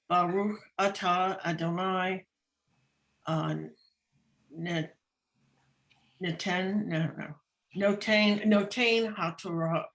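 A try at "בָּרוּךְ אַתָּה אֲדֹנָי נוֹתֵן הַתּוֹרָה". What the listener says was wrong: Good. Good, good.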